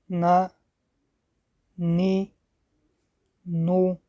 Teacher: Следующая буква – это буква Нун. Буква Нун произносят, дотрагиваясь кончиком языка десен верхних резцов.